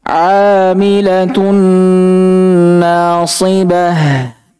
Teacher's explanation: nun tidak lagi dibaca melainkan langsung dimasukkan ke huruf setelahnya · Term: idgham